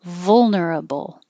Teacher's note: for both of these, schedule and vulnerable, don't round your lips for the final L noise.